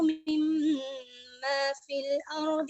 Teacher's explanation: مما میں میم کے بعد میم، میم ساکن کے بعد میم متحرک آیا تو یہاں پر ادغام شفوی ہے